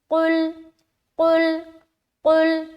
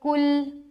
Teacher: پہلا حرف موٹا اور دوسرا حرف باریک نکالنا ہے